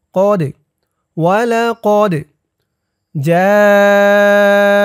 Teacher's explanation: ডাল কলকলার হরফ ধাক্কা দিয়ে পড়তে হবে।